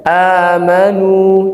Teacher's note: Yang pertama wau mad itu makhrajnya aljauf.